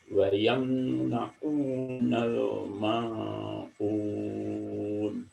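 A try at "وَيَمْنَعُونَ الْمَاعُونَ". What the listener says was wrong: Lahan jali sudah tidak ada Papi ya. Nah ini pada ain bisa nggak coba Papi merubahnya perlahan-lahan menjadi huruf yang tawasud. Contohnya wayam na'u agak dilembutin sedikit.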